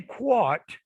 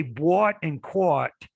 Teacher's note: like they do in the northeast area of the united states if you say bought and caught like that then you're using the open o